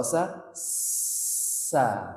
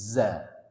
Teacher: Kalau sa. Desisnya lebih deras. Kalau zai itu seperti apa? Seperti berat ya. Za. Agak ke dalam dikit ya.